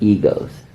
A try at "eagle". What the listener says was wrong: Eagle? It sounds like you're saying ego. Eagle. Eagle?